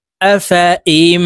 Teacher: এই হামজা তাসদিদওয়ালা মিমের সাথে গুন্নার সহিত পড়তে হবে, মাঝখানে জজমওয়ালা নুন বাদ পড়ে যাবে।